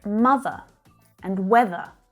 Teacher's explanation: schwa endings, in words that end in ER, but the sound is not pronounced